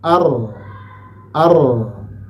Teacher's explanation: ketika disukunkan dia tidak ditekan dan tidak dilepas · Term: tawasuth